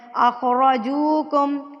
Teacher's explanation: را کے اوپر جب زبر آ جاتی ہے تو را ہمیشہ پور یعنی کہ موٹا پڑا جاتا ہے